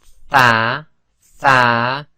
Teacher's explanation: th th so that was group seven group eight is where the tip of the tongue starts between the upper and lower teeth